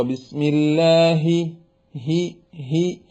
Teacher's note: തൊണ്ടയുടെ താഴെയറ്റത്തുനിന്ന് കാറ്റോടുകൂടി പറയുമ്പോഴാണ് ഹാ ഹി എന്ന ശബ്ദം ആവുക